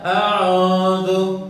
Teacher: Tertebalkan ain. Itu bunyi tebal.